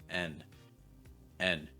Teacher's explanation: You add a vowel sound, right? You add this eh sound like in best or get, and then you add that n sound.